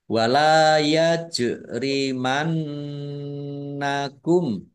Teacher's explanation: Wala yajrimannakum lam fathah alif mat tabi'i panjang 2 harokat. Jim sukun bacaan kolkolah dibaca memantul ditampakkan pantulannya. Nun tasdid dibaca gunnah atau mendengung ditahan kira-kira 2 harokat biar tampak dengungannya.